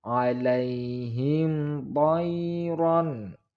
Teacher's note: mim sukun bertemu dengan to, idhar syafawi. Ingat tidak boleh mendengung. Idhar artinya jelas atau terang.